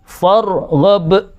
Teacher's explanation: Itu cepat, b-nya harus cepat tapi mantul. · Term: qalqalah